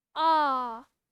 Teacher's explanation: वे स्वर जिनके उच्चारण में मुख द्वार पूरा खुलता है विव्रत कहलाते हैं